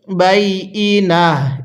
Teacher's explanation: ওয়াকফের কারণে তাকে হা বানিয়ে দিব